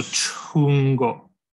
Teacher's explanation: This is actually a ch followed by a glottal fricative, so chungo.